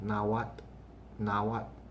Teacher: gradually you're pronouncing the L right after the T, but almost in the same fluid motion.